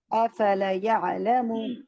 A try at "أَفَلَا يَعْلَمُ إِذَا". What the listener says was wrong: دیکھیں افلا کو لمبا کریے نا. الف مدہ ہے.